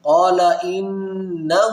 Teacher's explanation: یہاں پر دیکھیں تو نون مشدد ہے، یہاں پر ہمیشہ غنہ کریں گے